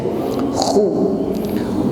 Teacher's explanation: Ya, ada suara yang menebal, ya, bukan hu tetapi khu. Ya, ada sedikit suara dengkur tetapi tidak perlu ditekan secara berlebih.